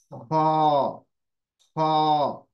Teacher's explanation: तो ये heavy letter है, इसकी आवाज भी मोटी होगी, जबान पीछे से आपकी उठेगी।